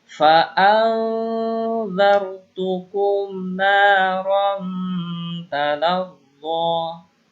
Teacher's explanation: Ikhfa itu samar-samar, ya. Jadi suara nun sukunya itu disamarkan menuju dal. · Kalau ketemu ta disamarkan menuju ta. Jadi jangan dijelaskan suara nunnya, disamarkan.